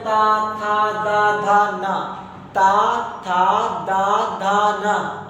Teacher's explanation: आपकी जीभा आपके दांतों को टच कर रही है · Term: दंत व्यंजन